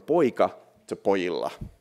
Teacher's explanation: we have to do something called consonant gradation, which means we have to weaken the consonant -- in this case, the K completely goes away.